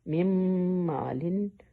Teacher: नून को नाक में ले गए और मीम के साथ में मीम को मिलाया